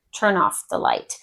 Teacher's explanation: We kind of take the N from the turn and throw it on with the off. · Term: linking sounds